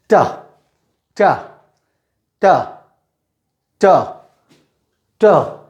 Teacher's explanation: लेकिन इंग्लिश में ट की साउंड को प्रोड्यूस करने के लिए दांत के पीछे की जो जगह होती है वहाँ पर जीभ की अगली नोक हम टच करते हैं।